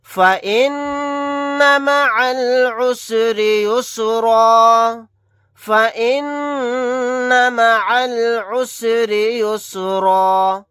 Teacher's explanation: عین کو لام ساکن کے ساتھ ملا دیں گے، یہ الف نہیں پڑھا جائے گا۔ یہاں پر را کو باریک پڑھیں گے کیونکہ را کے نیچے زیر ہے۔ آیت کرنے کی صورت میں را کے اوپر 2 زبر ہیں، لیکن ہم 2 زبر نہیں پڑھیں گے، ایک زبر کو پڑھیں گے الف کے ساتھ۔